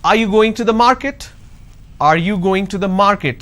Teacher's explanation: when I say are you going to the market, there is a rising tone.